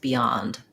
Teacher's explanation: I don't want beyond, rather beyond. So thinking about the ya as where my length is and where my clear vowel is